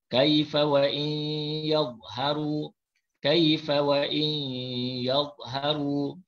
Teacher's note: nun mati bertemu ya dibaca dengan memasukkan bunyi nun ke dalam ya serta dengung. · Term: idgham ma'al ghunnah